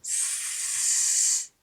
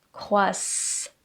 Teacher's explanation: Le double S qui se prononce ssssss et pas croizant.